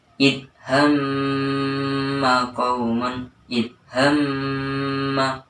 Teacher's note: Cara membacanya yaitu mim dan nun tersebut dibaca dengung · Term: gunnah musyaddadah